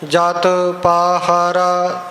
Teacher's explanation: ਇਹ ਜਤ ਕੱਸ ਕੇ ਨਹੀਂ ਬੋਲਣਾ, ਜਤ ਪੋਲਾ ਬੋਲਣਾ ਹੈ। ਪਾਹਾਰਾ ਤਿੰਨਾਂ ਹੀ ਅੱਖਰਾਂ ਨੂੰ ਕੰਨੇ ਲੱਗੇ ਹੋਏ ਨੇ।